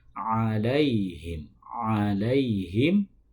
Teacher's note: ain dalam lafal alaihim itu di tengah tenggorokan. Alaihim, alaihim, bukan dibaca alaihim.